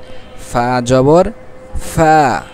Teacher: সামনের উপরের দুই দাঁত, ঠোঁট নিচের ঠোঁটের পেট, নিচের ঠোঁটের পেটের সাথে লাগিয়ে হালকা ফাঁকা থাকবে, ফা, বাতাস বের হবে।